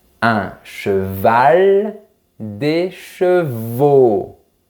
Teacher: Mes lèvres sont bien arrondies et la langue va vers l'arrière.